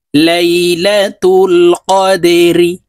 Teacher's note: জবর লা তা লাম পেশ তুল লাইলাতুল অফ দাল জবর কদে দাল কলকলার হরফ নিচের দিকে ধাবিত করে ধাক্কা দিয়ে উচ্চারণ করব